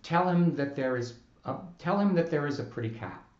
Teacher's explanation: Ordinarily, the vowel sound of the word is goes unpronounced, and the final z sound gloms on to the preceding word.